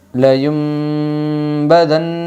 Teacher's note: اقلاب ہوگا نون ساکن کے بعد با آئی ہے، اس لیے نون ساکن کو میم سے بدل کر غنہ اور اخفا کے ساتھ پڑھے گی۔